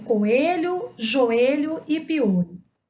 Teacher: Reparem que quando eu fiz a pronúncia dessas palavras, nenhuma das 2 vogais teve o som mais forte que a outra. Pelo contrário, as duas têm a mesma intensidade de som. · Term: hiato